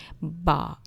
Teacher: جیسے اب دیکھیں با جو ہے یہ کہاں پہ آ کے آپ کی زبان رکتی ہے، آپ کے دونوں ہونٹ جو ہیں وہ مل جاتے ہیں اب، تو یہی جو ہے یہ با کا مخرج ہے، با، یعنی کہ دونوں ہونٹ ملیں گے تو با ادا ہوگی